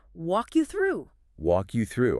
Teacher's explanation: You let the K glide directly into the Y, almost creating a K sound.